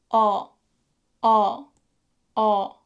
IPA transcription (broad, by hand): ʌ